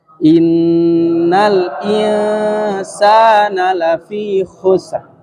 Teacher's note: Dan hukum gunnahnya ditahan. Jangan terburu-buru. Nah, ditahan. Dua harokat.